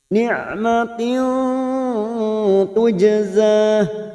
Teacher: Min ni'matin tak marbuta di sini yang berharakat kasrah tanwin kasrotain yang bertemu tak namanya ifa hakiki. Kita samarkan bunyi kasrah tanwin pada huruf tak marbuta.